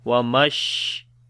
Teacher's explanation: In the sheen we make tafashi quality, like the spreading the sound of sheen into our mouth, which is called tafashi.